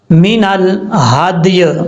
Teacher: من الحدی اس طریقے سے پڑھنا ہے، صرف ہم نے یا کا ساؤنڈ پڑھنا ہے، جب وقف کریں گے یا کے نیچے جو زیر ہے وہ نہیں پڑھیں گے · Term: یا کو ساکن کر دیں گے